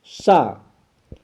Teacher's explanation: सा का सही नाम जिसे हम लोग छोटा सा के नाम से जानते हैं, इसे दंत सा कहना चाहिए। इसका उच्चारण स्थान हमारे पास दंत है